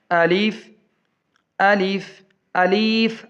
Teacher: اسے لمبا نہیں کھینچنا، صرف الف کہنا ہے